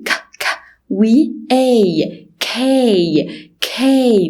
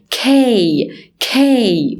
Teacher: ولازم نتأكد ان في air puff sound هوا. اوكي فبنقول ايه ك ك وي اي كي كي وانا بنطقها في شوية هوا بصوت كده كي كي.